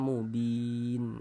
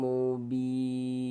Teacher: huruf yang memiliki harokat kasroh dibaca panjang, sehingga bi dibaca panjang. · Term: mad arid li sukun